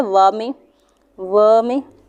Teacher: फिर दंत और ओष्ठ, दंत यानी दांत होता है, दांत और ओठ दोनों का प्रयोग होता है